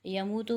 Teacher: واو مدہ بن رہا ہے، واو ساکن سے پہلے پیش ہے، 1 الف کی مقدار کھینچیں گے